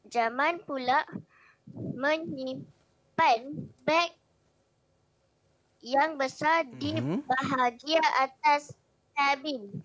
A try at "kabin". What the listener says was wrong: Kabin, jangan sebut kabin. kabin. Kabin. Kabin sebutan dalam bahasa Inggeris. Dalam bahasa Melayu kita sebut kabin.